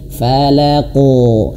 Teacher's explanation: Huruf qof pantulannya itu harus tebal. Falaqo. Nah, karena dia memiliki sifat tebal istla ya. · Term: qalqalah